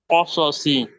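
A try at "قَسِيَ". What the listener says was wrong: মাশাআল্লাহ, খুব সুন্দর উচ্চারণ করেছেন, একদম মোটা হরফগুলো মোটা হরফের মতো উচ্চারণ করেছেন,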